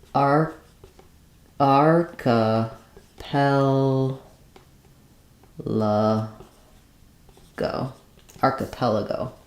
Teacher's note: for archipelago, we have the stresses on the third to last syllable. The letters AR say R.